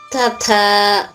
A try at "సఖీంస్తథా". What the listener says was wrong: అలా కదమ్మా, తథా కాదు తల్లి, స్తథా.